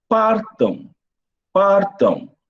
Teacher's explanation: o M não tem som de M, mas tem som de W. Então, partam, nós temos 6 letras e 6 fonemas.